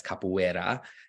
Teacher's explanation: in the middle of words if it's a single R it's still pronounced like an R like we would in English